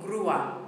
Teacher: we've got the accent on the U making it grua making a two syllable word